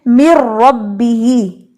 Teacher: تو مِن رَبِّهِ میں نون مکمل طور پہ را کے اندر مرج ہو گیا، اس لیے یہ ادغام کہلائے گا ادغام تام